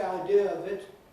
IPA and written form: aɪˈdɪə əv ɪt (idea of it)